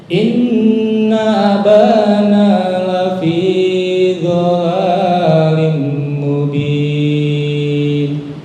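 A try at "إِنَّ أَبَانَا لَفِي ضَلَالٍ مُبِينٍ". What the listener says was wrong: Dotnya kurang mantep ya. Salah satu tepi lidah. Do. Lafi dhalalim. Do. Dhalalim.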